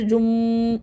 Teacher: منہ بند کر کے غنہ کریں گے